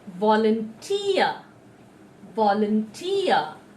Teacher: So here the t sound is there, and it has the accent mark or the stress mark, and hence we are telling with the not just t, we're telling t with extra breath force